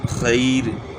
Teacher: وقف والی را سے پہلے یا ساکن ہو تو را باریک ہوگی، چاہے یا ساکن سے پہلے زبر ہی ہو.